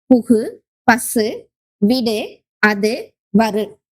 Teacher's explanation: முற்றியலுகரம் தனிக்குறில் எழுத்தை அடுத்து வரும் வல்லின உகரங்கள் ஓசை குறையாமல் ஒரு மாத்திரை அளவுக்கு முழுமையாக ஒலிப்பது முற்றியலுகரம்